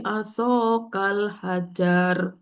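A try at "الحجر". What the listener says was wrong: Hajar pendek.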